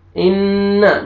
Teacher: या नून मुशद्दद है, नून पे गुन्ना करेंगे